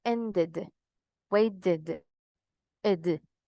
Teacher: Acá dice que la pronunciación de la E va a ser como una I, ¿ok? Pero no tan marcada